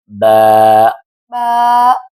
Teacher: ب یہ حرف دونوں ہونٹوں کے تر حصہ سے ادا ہوتا ہے · یہ آپ کے ہونٹ فولڈ ہوئے برابر رکھیں، گڈ، یہ دونوں ہونٹ آپس میں برابر ملیں گے، اور یہ تھوڑا سا سخت ہو کر بھی ادا ہوگا، اس میں طاقت بھی ہوگی، اور ہونٹوں سے پھسل کر ادا ہوگا، ہونٹوں سے پھسل کر ادا ہوگا۔